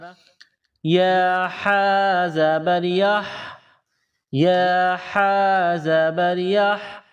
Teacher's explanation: ہا گلے کے درمیان سے زور لگا کر ہا کو نکالیں گے، ہا کو ادا کریں گے